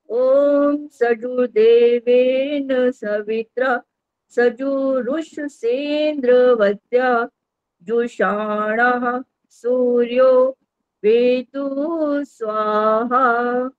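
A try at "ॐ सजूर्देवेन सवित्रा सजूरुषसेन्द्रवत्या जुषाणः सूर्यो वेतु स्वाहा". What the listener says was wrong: जैसे कहीं कहीं बीचबीच में रुक जाते हो ना ऐसे नहीं बोलते मंत्र को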